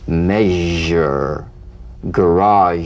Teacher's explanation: make the whispering SH and add vocal resonance